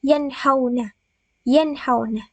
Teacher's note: cara membacanya harus dibaca dengan terang jelas dan tanpa mendengung